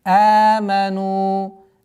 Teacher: Удлинение в размере двух огласовок даммы.